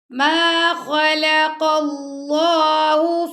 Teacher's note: ما خا کو بھی موٹا پڑھیں گے، لام کو باریک اور قاف کو موٹا